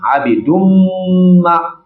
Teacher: akwai gunna saboda akwai idgami a wajen nan, to za a yi gunna a jikin mimun din nan